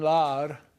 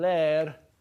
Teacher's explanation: the vowel in lar is back, and the vowel in ler is front